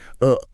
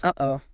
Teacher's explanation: >> Uh-oh. And that feeling of your throat catching that tightness right in the middle. That is your vocal cords slamming shut. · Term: glottle stop